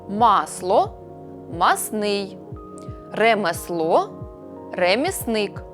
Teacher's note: у групі приголосних с ЛН випадає л масло масний ремесло ремісник проте наявні такі слова у яких спрощення